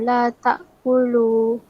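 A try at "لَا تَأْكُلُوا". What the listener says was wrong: La tak kulu tu panjang sikit. Kulu, la tak kulu.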